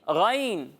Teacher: اور حروف مستعلیہ وہ 7 حروف ہیں جن کو ہر حالت میں ہمیشہ پر یعنی موٹا پڑھنا ضروری ہے، یعنی جہاں بھی یہ حروف ہوں گے انہیں ہم پر پڑھیں گے، موٹا کر کے پڑھیں گے، ٹھیک ہے۔ تو غین بھی حروف مستعلیہ میں سے ہے تو اسے بھی ہم پر پڑھیں گے، موٹا کر کے پڑھیں گے